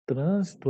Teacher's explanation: trânsito é uma proparoxítona ou seja a antepenúltima sílaba é a sílaba tônica e as outras palavras são paroxítonas quando a penúltima sílaba e